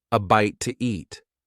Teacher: In fast speech, when one word ends in a vowel sound and the next one starts with a vowel sound, we often add an extra sound to make it easier to say. In this case, the extra sound is W